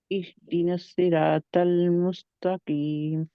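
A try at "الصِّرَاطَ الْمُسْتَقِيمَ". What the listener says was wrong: स्वाद को मोटा करे, रा को मोटा करे। को मोटा करे ना, सिर बहुत आसानी के साथ सीरा आप कह रहे हैं, स्वाद है सीरा। सीरा को मेहनत करें इसके ऊपर।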